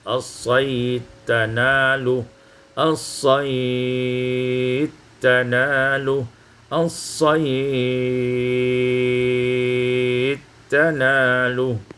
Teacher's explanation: Pada ayat yang ke-94, as-saydi tanaluhu, idghamud dal fit ta, diidghamkan dal pada ta